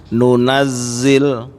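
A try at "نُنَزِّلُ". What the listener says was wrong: Baik, sudah Pak. Barakallahu fiik.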